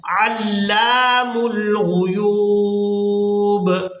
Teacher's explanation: ہم نے لام کو الف مدہ کی وجہ سے کھینچ کر ادا کرنا ہے